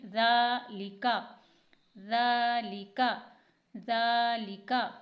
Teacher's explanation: ذال پر کھڑی حرکت ہے، کھڑی حرکت کو تھوڑا سا کھینچ کر پڑھتے ہیں